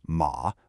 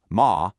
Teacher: saying someone's surname as Ma with a falling rising third tone versus Ma, a high flat first tone